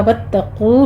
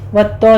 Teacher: वत्तकू में आपने ध्यान रखना है कि ता को आपने सिर्फ तशदीद अदा करनी है, इसको आपने मोटा नहीं करना। वत्तो नहीं कहना आपने, वत्तकू कौफ मोटा पढ़ेंगे।